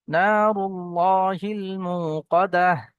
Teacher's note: ওয়াও সাকিনের পূর্বে পেশ এসছে ওয়াও মাদ্দা এক আলিফ পরিমাণ টান দিয়ে পড়তে হবে · এখানে আল্লাহ শব্দের পূর্বে পেশ এসছে লামকে পুর করে পড়বো